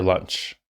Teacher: only the initial vowel sound is what's getting stretched. The rest of the word is being said just how it would be.